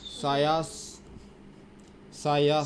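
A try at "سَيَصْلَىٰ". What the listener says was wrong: সাইয়াস। সদ। সদ। সাইয়াস। সিন উচ্চারণ করতে, সিন সিন। ঠুট কিছু করা যাবে না, যে এই আওয়াজটাকে বের কর। না, আওয়াজ আওয়াজ আসে না, এটা শিনের আওয়াজ আসছে এটা। এই তোমার যেটা আওয়াজ আছে এটা শিনের আওয়াজ আসছে।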